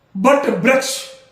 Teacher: आज आप वाराणसी साइड जाइए, वहां के लोगों को हमने देखा, कई विद्वानों को देखा, सबकी बात नहीं कर रहा हूं, लेकिन वो बट वृक्ष ऐसे उच्चारण करते हैं, वा की जगह बा उच्चारण करते हैं